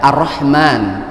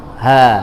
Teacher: Jadi kalau ha itu dikeluarkan di tengah-tengah tenggorokan, ya, Ar-Rahman. Sedangkan ha ini di paling dalam. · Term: aqsal halaq